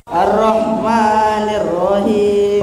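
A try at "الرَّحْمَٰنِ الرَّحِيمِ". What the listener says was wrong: Ro-nya bukan r, bukan. Tebal, ro. Ar-Rahmanir-Rahim.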